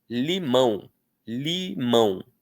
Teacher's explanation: O ã é vogal. O um no finalzinho é semivogal.